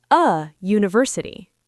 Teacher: it sounds like you university. That U sound is a consonant sound.